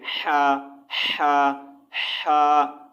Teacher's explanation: ये जो हा की आवाज़ जो है हलक से रगड़ खाकर निकलती है